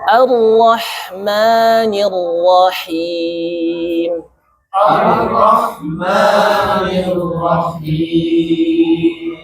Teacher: hanya ujung lidah kita menyentuh langit-langit atas bagian depan. Namun pangkalnya naik sehingga suaranya tebal. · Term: huruf Ra